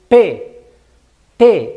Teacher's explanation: el aire sale como pequeños golpecitos como como pequeñas explosiones por eso se llama oclusivo o explosivo